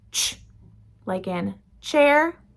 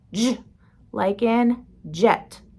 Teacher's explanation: These are called affricates, and the first one is ch, like in chair, no voice, and j, like in jet. Voice is on